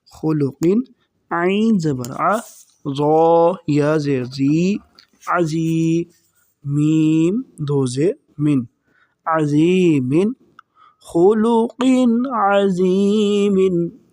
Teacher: دیکھیں دو زیر تنوین، اس کے بعد عین آ رہا ہے جو کہ حروف حلقی ہے، حلق سے ادا ہوتا ہے، تو یہاں پر ہم غنہ نہیں کریں گے